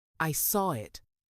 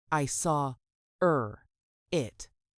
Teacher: The R sound is added to help link the vowel sounds. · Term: Intrusion